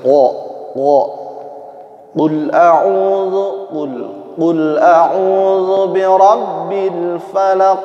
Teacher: makhrajnya, letaknya ada di pangkal lidah. Sifatnya termasuk isti'la, jahr, mengangkat pangkal lidah, isti'la di antaranya. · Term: qaf